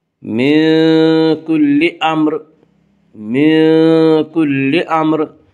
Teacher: اس کا قاعدہ ہے کہ اس کے اوپر اگر پیش آئے تو اس را کو پر پڑا جائے گا، اور اگر اس را کے نیچے زیر ہے تو اس را کو باریک پڑا جائے گا، یا را کے نیچے زیر ہے اس را کو یہاں باریک پڑھیں گے